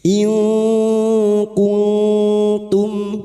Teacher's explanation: Nun sukun atau tanwin bertemu dengan salah satu dari 15 huruf ini, termasuk huruf kaf. Kemudian bunyi nun sukun dibaca secara samar dan dinasalisasi selama tiga harakat. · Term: ikhfa hakiki